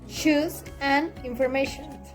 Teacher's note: the place of articulation is palatal alveolar